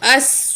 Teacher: حمزہ زبر سواد اس، سواد کو موٹا کر کے پڑھیں گے